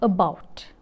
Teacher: The lips are unrounded, about, the lips are unrounded. Hence, this vowel is known as a central unrounded vowel between half open and half close if it is in a non-final position